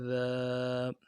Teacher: ذال کو نرمی سے پڑھنا ہے، الف مدہ ہے، ایک الف مدار میں کھینچنا ہے